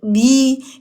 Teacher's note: Huruf ba. Kita tutup bibir kita. Bervokal i. Turunkan bibir.